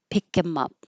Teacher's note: get rid of the h and him